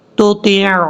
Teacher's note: تا کو عین سے کنیکٹ کریں گے، عین کو کلیئر کرنا ہے